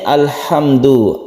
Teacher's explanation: sukun lamnya itu jelas dan lam itu bersifat tawasut artinya tidak terlalu ditekan dan tidak terlalu dilepas · mim ini juga adalah izhar syafawi dibaca izhar tidak dengung tapi dia masih punya sifat tawasut itu demikian juga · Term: izhar Qomariyah, tawassut